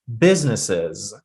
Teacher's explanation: putting the stress on the first syllable and she's trying to have all of them correctly.